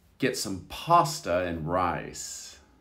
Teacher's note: you don't hear the and do you